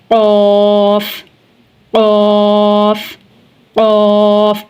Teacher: फ आगे है कफ कफ कफ पुर पढ़ा जाएगा और इसका मखरज है जुबान की जड़ और तालू का नरम हिस्सा